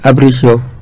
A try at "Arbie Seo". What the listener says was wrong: Arbiseo. Arbi, bukan Abri. Arbiseo. A-R-B-I-E R sebelum B.